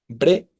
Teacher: Se separa la E de la A, ¿no? Tenemos hiato también, grave terminada en vocal.